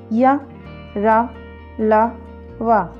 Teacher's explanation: अंतःस्थ व्यंजनों में जिह्वा मुख के किसी भाग को पूरी तरह स्पर्श नहीं करती। वायु भी बहुत कम समय के लिए रुकती है, इसलिए ये व्यंजन अंतःस्थ व्यंजन कहलाते हैं।